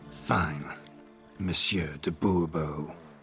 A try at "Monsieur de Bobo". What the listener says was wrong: The emphasis falls on the last syllable. Bobo?